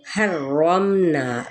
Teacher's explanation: پڑھا جائے گا، پہلے ہا کی زبر کو را کے ساتھ ہا وسط حلق سے ادا کرنا ہے، رگڑ کھاتی ہوئی آواز کے ساتھ